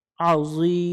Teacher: আইন অক্ষর গলা চেপে উচ্চারণ করব